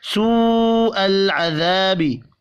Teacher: بڑی مد کو 5 الف کے برابر کھینچ کر پڑھیں گے اور بڑی مد واو کے اوپر ہے۔